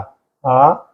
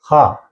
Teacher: ആ, കവർഗം, ഹ, ഇവയൊക്കെ കണ്ഠത്തിൽ നിന്ന് ഉച്ചരിക്കണം. കണ്ഠ്യം എന്ന് പറയും അവയെ.